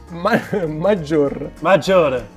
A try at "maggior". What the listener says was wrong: Senza la E. Maggior. No, maggior.